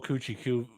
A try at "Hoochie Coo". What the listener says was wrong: It's Hoochie Coo, not Coochie Coo. you keep saying Coochie Coo. Hoochie Coo.